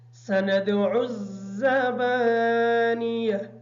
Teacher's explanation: زبانیہ کی جو زا ہے اس زا کو سختی کے ساتھ ادا کریں گے تاکہ یہ صحیح طریقے سے حروف سیٹی میں شمار ہو جائے